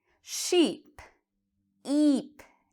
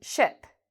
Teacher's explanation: Sheep, eep. It's a long sound. Sheep. This is very different from ship. Ship is a very short sound.